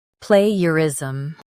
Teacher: Stress play and keep ger light.